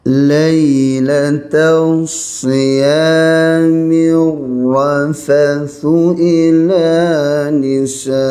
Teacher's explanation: Lailatul siyami rafathu ila, mim nipis, ra kena tebal, ada sabdu kena beratkan ra ni.